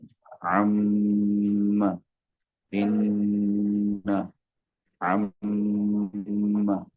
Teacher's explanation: میم مشدد کو دو حرکات کے برابر غنہ کر کے پڑھیں گے